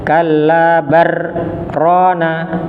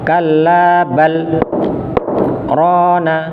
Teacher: ketika dibaca saktah, lamnya jangan berganti atau masuk huruf ro. Jadi jangan dibaca kalabar rona, tidak, tapi lamnya dibaca jelas kalabal rona.